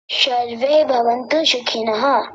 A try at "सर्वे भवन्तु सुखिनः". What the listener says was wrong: अब फिर से वैसा ही बोल रहे हैं। आप अंतर समझे नहीं दंत्य सकार और तालव्य सकार का।